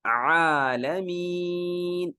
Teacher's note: عالمین، لمبا کریں گے، کیوں؟ اس لیے کہ یا مدہ ہے، دیکھیں یا پہ جزم، اس سے پہلے زیر، یا مدہ۔